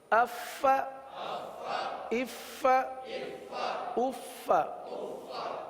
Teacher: فا کے بجائے پا پڑھ دیتے ہیں. تو اف فا کی یہ آواز سانس والی آواز یہ ظاہر ہونی چاہیے.